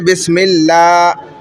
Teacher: لفظ اللہ کے لام سے پہلے زیر ہوگا تو لام باریک